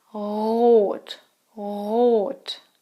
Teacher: In standard German, the R is not rolled.